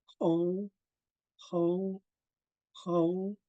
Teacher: the throat above the your voice box and producing a Gruff raspy H sound